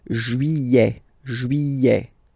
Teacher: Don't pronounce this final T, E-T here at the end.